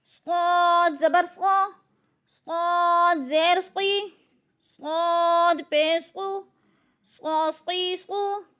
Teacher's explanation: صاد موٹے حروف میں سے ہے، اس کو موٹا کر کے یعنی پر کر کے پڑھنا ہے